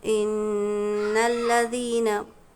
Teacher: नाक में थोड़ी देर आवाज़ को रोकेंगे, होल्ड करेंगे कुछ सेकंड के लिए। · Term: गुन्ना